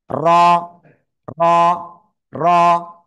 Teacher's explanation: জিহ্বার আগার পিঠ তার বরাবর উপরে তালুর সাথে লাগাবো, লাগিয়ে মোটা আওয়াজে আমরা এক আলিফটা নিয়ে উচ্চারণ করব।